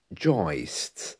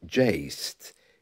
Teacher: joist, sometimes pronounced jaist in different parts of the country